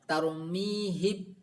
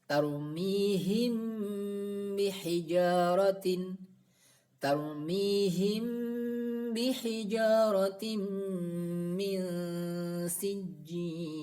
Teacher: mim sukun tersebut dibaca dengung dan samar, tidak jelas tarmihim atau tidak idgham masuk ke huruf ba, tarmihib. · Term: ikhfa syafawi